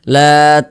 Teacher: ada tanda dikasih tanda ni tanda panjang berbentuk seperti bendera ni nah kita panjangkan 6 harakat ujungnya kita tekan